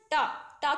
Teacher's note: हमारे जो जीभ का अग्र भाग है पहला भाग है तलवे में पीछे वाले हिस्से को टच कर रहा है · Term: मूर्धन्य